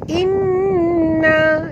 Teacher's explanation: nun bertasydid, wajib al-ghunah, wajib dengung